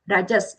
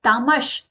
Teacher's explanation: Rajas, there the dental sa. Then tamash, there palatal sha.